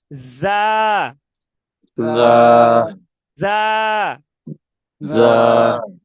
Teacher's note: যা যা দুই দাঁত লাগিয়ে বাতাস বের করব, ধাক্কা দিয়ে বাতাস বের করব।